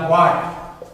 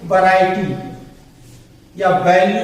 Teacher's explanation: इस डब्ल्यू के वा को हमें ओठ को गोल करके बोलना रहता है और वी वाले वा में हमको ऊपर वाला दांत और नीचे वाला ओंठ मिला के बोलना रहता है